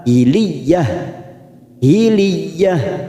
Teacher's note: Ada tak marbuta maka kita membaca seperti huruf ha